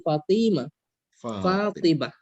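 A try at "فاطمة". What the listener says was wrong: Lahzah ya, ini yang panjang itu faknya ya, bukan toknya. Fatimah.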